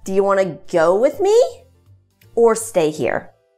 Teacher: questions we find the same intonation as for the wh questions the intonation rises and falls it's going to rise on the first proposition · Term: either or questions